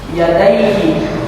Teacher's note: fathah bertemu dengan huruf ya mati. Cara membacanya secara lunak dan lemas. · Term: madlin